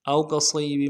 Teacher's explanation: واو لین ہے، او اس کو بغیر کھینچے پڑے گی